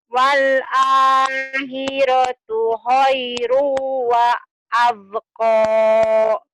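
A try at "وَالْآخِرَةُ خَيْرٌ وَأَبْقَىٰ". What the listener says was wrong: Iya, tinggal nanti latih teteh kho-nya ya. Wal akhiratu khairu wa abqa.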